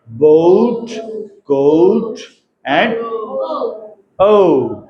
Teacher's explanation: back open rounded vowel O, towards the direction of the centralized back rounded vowel above the half closed line. ठीक है, thereby producing the vowel glide or diphthong pronounced as O, as in examples boat, coat and O, है ना, no, ऐसे 3-4 example.